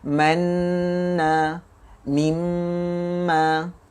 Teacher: Huruf nun dan mim yang bersabdu mesti dan wajib didengungkan bacaannya dengan dengung yang sempurna. Maka hendaklah ditahan suara pada mim bersabdu dan juga nun bersabdu itu 2 harakat.